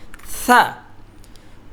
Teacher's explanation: পাতলা হবে। সা বলার সময় জিহবাটা দাঁতের সামনে যে দাঁতটি আছে সেখানে হালকা একটু আগার মধ্যে লাগবে।